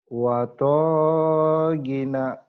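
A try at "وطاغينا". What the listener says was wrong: watagina. Panjang tuh sama ginya ya.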